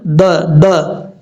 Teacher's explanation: ہا کے بعد جو دال ہے، دال میں قلقلہ ہے. یہ جو آواز آ رہی ہے نا د، یہ قلقلے کی آواز ہے.